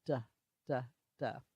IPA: d